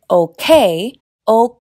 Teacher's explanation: Cuando empiezo a decir, “OK”, “OK-”, me preparo para hacer el sonido Kuh cerrando la garganta, lo que detiene el aire. Para producir la segunda parte, “O-Kay”, libero el aire.